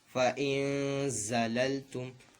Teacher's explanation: یعنی نون ساکن کی آواز ناک میں لے کے جائیں گے اور ایک الف دو حرکات کے برابر کھینچ کر پڑھیں گے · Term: غنہ